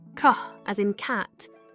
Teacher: made by pressing the back of the tongue against the soft part of the roof of the mouth the Vellum and then releasing the sound is produced by stopping the air flow and then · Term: velar plosive